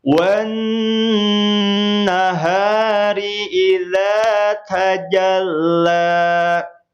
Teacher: Nun bertasydid ditahan 2 ketukan.